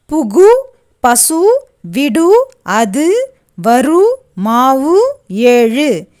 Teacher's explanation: ஓசை குறையாமல் ஒரு மாத்திரை அளவில் முழுமையாக ஒலிப்பது முற்றியலுகரம்